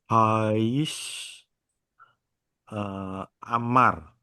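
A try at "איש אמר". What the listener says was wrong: Ish Amar ya. Antara A dengan I-nya lebih lebih putus lagi. jangan Hais tapi Haish gitu ya. Amar ya. Jadi kalau dia sudah pisah huruf ya, apalagi ini Alef ya, dia itu artinya terpisah suku kata ya. Pisah suku katanya ya. Jadi bukan Haish. Seakan-akan nanti kalau Haish jadi apa vokalnya H gitu ya. Jadi vokalnya si He nanti.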